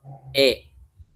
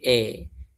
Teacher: Jadi mengucapkan suaranya itu di antara alif dengan ya ataupun dengan fathah dengan kasrah. Jadi bukan i tapi e majre busrire adre gitu is mus seperti itu. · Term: imalah kubra